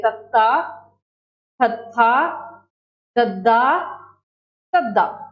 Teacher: इन्हां धुनियां का उचारण करते समय जिहड़ी साडी जीभ है दंदां नाल छूंदी है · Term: दंती धुनियां